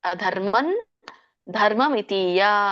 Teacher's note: ದ ಧ ನ ಸೋ ಹಾಗಾಗಿ ನ ಅನುಸ್ವಾರ ಕೂಡದೆನ ಅನುನಾಸಿಕ ಬರುತ್ತೆ ಹಾಗಾಗಿ ಅಲ್ಲಿ ಅಧರ್ಮನ್ ಅಂತ ಹೇಳಬೇಕು ಅಧರ್ಮನ್ ಅಧರ್ಮಂ ಅಂತ ಹೇಳಂಗಿಲ್ಲ